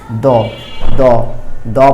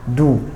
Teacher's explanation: পেশের উচ্চারণ বাংলায় রস্যুকারের মতো, ওকারের মতো পড়া যাবে না।